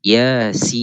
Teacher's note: Yasin, ya mad asli, kena 2 harakat. Sin wajib kita baca 6. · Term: 6 harakat